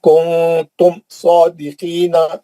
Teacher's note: کنتم نون ساکن کا اخفا ہے لیکن میم کا اظہار ہے نا